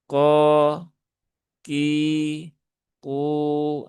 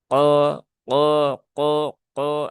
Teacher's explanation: qof cukup dinaikkan pangkal lidahnya dengan wajar tanpa ada perlu tambahan suara yang lain atau kalau orang Jawa bilang ada suara teklik-tekliknya gitu ya. · Huruf kof ini huruf tebal ya. Huruf isti'la. Dia di pangkal lidah. Ya. Pangkal lidahnya naik.